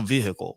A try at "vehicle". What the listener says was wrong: You pronounce the H so harshly. You're like vehicles.